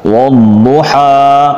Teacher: ضاد 2 دفعہ پڑھا جائے گا، پر پڑھیں گے ضاد کو، واو ضاد پہ پیش ہونٹ گول کر دیے جائیں گے۔ ہا، یہ الف مدہ ہے، آواز ہوا میں ختم ہو جائے گی، جھٹکے یا ایک الف سے زیادہ بھی مقدار میں کھینچنا منع ہے۔